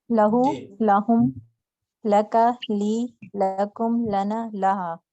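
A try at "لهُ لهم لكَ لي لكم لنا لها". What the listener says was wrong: जबरदस्त।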